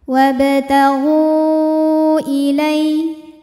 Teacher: maka gain dipanjangkan boleh empat boleh lima harakat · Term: Mad Jaiz munfasil, mad jaiz munfasil